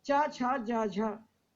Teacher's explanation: इनका उच्चारण स्थान तालु है, दांत के पीछे वाला भाग, वहां जाके जीभ लगती है।